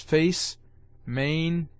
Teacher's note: The A slender is the proper English A, called very justly by Erpenius in his Arabic grammar A Anglicum cum imistum, as having a middle sound between the open A and the E